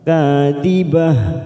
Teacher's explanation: ha fathah diikuti alif dua harokat, ka fathah diikuti alif dua harokat